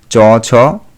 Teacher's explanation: প্রথমে স্পর্শ ধ্বনির মত পূর্ণ বাধার সৃষ্টি হয় এবং ক্ষণকাল পরেই সেই বাধা কমে উষ্ণ ধ্বনির মত আংশিক বাধায় পরিণত হয় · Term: ঘৃষ্ট ধ্বনি